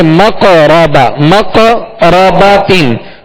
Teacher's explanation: قاف ساکن ہے اور قاف حروف قلقلہ میں سے, لہذا یہاں قلقلہ کریں گے